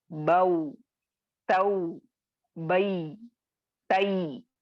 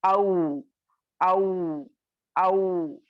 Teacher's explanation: वाउ साकिन और या साकिन से पहले वाले हर्फ पर अगर आपको जबर आए तो वो हुर्फे लीन होगा और वो नरमी से अदा होंगे